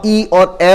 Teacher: जब आप ई और ए बोलते हैं तो यह माना जाता है कि जीभ का पिछला और मध्य का हिस्सा लगभग निष्क्रिय रहता है, अगला हिस्सा काम करता है, ठीक है, अगला जो हिस्सा है जीभ का वही काम करेगा, ये वाला हिस्सा। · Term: अग्र स्वर